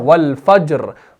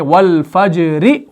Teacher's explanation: जीम तो साकिन है ही, लेकिन रा को आप आरजी सुकून देकर साकिन बना देते हैं वक्फ की सूरत में